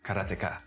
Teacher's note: In Japanese, there's no stress on any syllable, so it would be karateka, something like that.